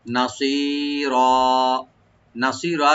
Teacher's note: মিল্লাদুনকা নাসিরা, নাসিরা নুন ওপেন রাখবেন, সোয়াটাকে একটু ডিপ করে এখানে একালে টানবেন